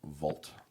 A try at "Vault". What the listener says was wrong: Are you saying Volt? No, it sounded like you were saying Volt. Like Voltron. We're going to see the Vault.